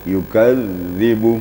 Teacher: Huruf zal itu sifatnya rakhawa. Rakhawa itu artinya mengalir. Jadi kalau kita mengucapkannya yukadzibu, tidak boleh diputuskan.